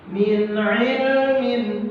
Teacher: karena ada nun sukun bertemu dengan ain. Dibaca jelas, tidak boleh didengungkan. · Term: idhar